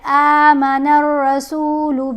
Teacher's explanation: اب الف کو کھینچ کر پڑھیں گے کیونکہ کھڑا زبر ہے